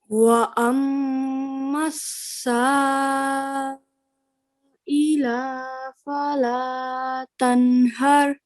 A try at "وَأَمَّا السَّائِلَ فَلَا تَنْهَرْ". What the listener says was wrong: Just one thing over here. Remember, this lam simply has a fatha. So we're not to stretch that longer for than 1 second. So it's going to simply be ila. Remember, don't stretch it.